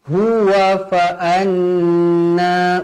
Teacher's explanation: wajibul guna, dua harakat dengung